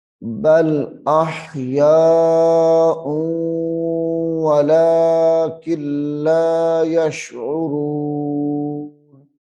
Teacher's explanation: حمزہ کے اوپر تنوین ہے تو تنوین واو کے ساتھ مل رہی ہے ، تو اس کو ذرا رک کے پڑھیں گے تو بل